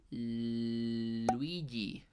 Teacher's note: el aire, en vez de ser expulsado por el centro de la boca, va a ser expulsado por los lados, tanto izquierdo como derecho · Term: consonantes laterales